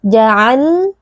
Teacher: huruf lam sukun bersifat bainiyah, pastikan ada sedikit aliran suara